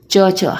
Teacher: ठीक है, च छ हमारी जीभा हमारे ऊपर के भाग को, तालु को टच कर रही है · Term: तालव्य